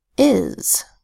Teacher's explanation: the voiced S sound comes at the end of a word